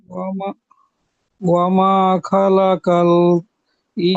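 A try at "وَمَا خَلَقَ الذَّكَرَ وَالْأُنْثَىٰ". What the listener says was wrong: খলাকল নয়, খলাকজ। এই কফটা গিয়ে জালের সাথে যোগ হবে। ওয়ামা খালাকাল যাকারা ওয়াল উনসা।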